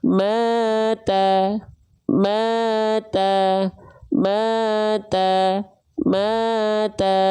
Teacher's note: mad tabi'i kadar 2 harokat itu biar dia konsisten, gak kepanjangan dan gak kecepatan, cukup dibaca dengan kadar 2 kali ayun.